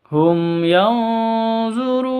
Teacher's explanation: Mim mati bertemu dengan ya, bacanya jelas, terang, tidak boleh disentak, tidak boleh didengungkan.